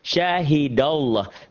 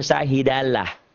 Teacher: Ini masih tebal. Dibaca tebal, berbunyi oh Allah karena sebelumnya berbaris di atas atau fathah.